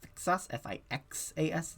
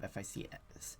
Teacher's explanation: sometimes that S and C get mixed up and it becomes fixas